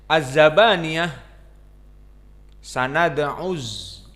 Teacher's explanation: Maka di sini kita baca dengan flat, dengan rata, tidak ada ketinggian. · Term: muraqqaqah